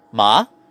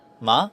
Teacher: The pitch starts low and rises up over the course of the syllable. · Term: second tone